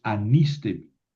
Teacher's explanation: Ya no puedo pronunciar el espíritu rudo porque ya no está al principio de la palabra.